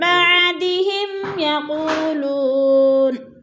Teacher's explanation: میم ساکن کے بعد یا ہے تو ادھر اظہار شفوی ہے، غنہ نہیں کریں گے، لفظ کو ظاہر کر کے پڑھیں گے